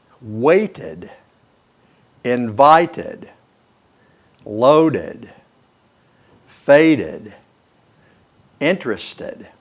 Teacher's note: And the first thing I want to talk about is the repeated sound of T and D. When a word ends in a T or a D sound, you have to put an extra syllable to hear the ED sound.